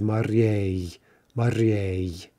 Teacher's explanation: That yay ending will often be stressed